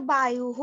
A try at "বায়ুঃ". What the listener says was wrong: হ্যাঁ হ্যাঁ, বায়ুহু হবে তো। বায়ুহু, যে বিসর্গ দিয়েছি না, বিসর্গ মানে তো হয় উচ্চারণ হবে, বায়ুহু উচ্চারণ হবে, ঠিক আছে। তো বায়ু হ বলবেন না, কেননা এই যে আমাকে দেখতে হবে আগে লেটারের মধ্যে যুক্তাক্ষর রূপে কি আছে। মানে এখানে আমার যদি উকার থাকে তাহলে হু হবে, যদি আকার থাকে তাহলে হা হবে, ঠিক আছে।